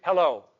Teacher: you're giving two syllables and you're ending on an O, which is the most resonant vowel